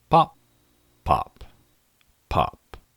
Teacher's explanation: Well, Cheryl, a pop filter filters out aspirated plosives, which is a fancy way to say that my P's, and sometimes B's, occasionally explode aspiratedly. I'm no expert, but that doesn't sound good.